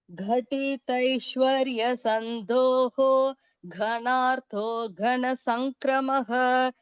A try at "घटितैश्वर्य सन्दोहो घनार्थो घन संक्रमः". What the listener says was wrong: घटितैश्वर्य टी வந்து ஹ்ரஸ்வம்